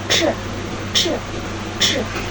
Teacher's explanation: Glotis dalam keadaan terbuka sehingga bunyi dialirkan tanpa menggetarkan pita suara.